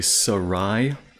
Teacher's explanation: They usually put the stress or the accent on the last syllable.